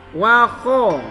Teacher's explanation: Kha itu wa kha, harus kedengaran keluarnya di kerongkongan. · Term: huruf kha